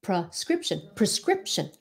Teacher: Sometimes because we say it quickly, it sounds like pra, even though you're saying pre.